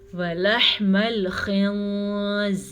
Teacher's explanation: نون ساکن کے بعد زا حروف اخفا میں سے ہے تو نون ساکن کو ہم چھپا کے پڑھیں گے